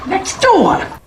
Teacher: we'll say next door, where the T disappears and 2 words get linked together. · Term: linking and elision